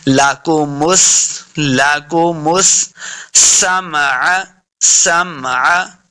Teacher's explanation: وجعل، وجعل لکم السمع، لکم، لام اور کاف کو ہم نے لمبا نہیں کرنا، میم کو سین کے ساتھ لا کے پڑھنا ہے، سین پہ سیٹی کی آواز آئے گی۔